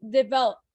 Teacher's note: the O sounds like what is called a schwa. I don't know why the screen keeps disappearing on you guys' end, but that O right before the P in develop is not really sounded out.